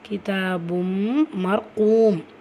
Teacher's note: தன்வீனை தொடர்ந்து letter மீம் இருக்குது. ஸோ இதுதான் பில் குன்னா, இணைச்சி குன்னா செஞ்சு ஓதணும்.